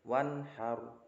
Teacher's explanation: Wanhar ada nun sukun bertemu dengan ha, maka nunnya dibaca jelas. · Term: izhar